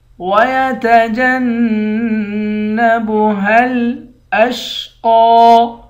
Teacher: وَيَتَجَنَّبُهَا الْأَشْقَى، وَيَتَجَنَّبُ، جیم کو نون کے ساتھ ملا کر نون پر غنہ کریں گے، ہا کو لام سے ملائیں گے، وَيَتَجَنَّبُهَا الْأَشْقَى، قاف کو موٹا پڑھیں گے اور ایک الف کی مقدار کھینچ کر بھی پڑھیں گے